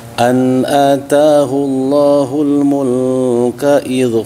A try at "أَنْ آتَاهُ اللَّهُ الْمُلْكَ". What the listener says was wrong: Mulnya jangan ditahan. Mulka jangan ditahan. Mulka biasa aja.